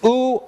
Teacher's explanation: For oo, your tongue moves back, raises, and you round your lips.